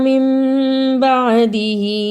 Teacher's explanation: اقلاب اور ہا کے نیچے کھڑی زیر ہے اس لیے تھوڑی دیر لگائی